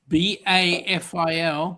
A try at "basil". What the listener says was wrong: No, S. BASIL.